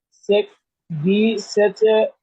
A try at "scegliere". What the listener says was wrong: সেচে না, সে, সে, এটা দুনতা সরোচন হবে, এসের পরে সি, সির পরে সে হবে, সেচে হবে কেন?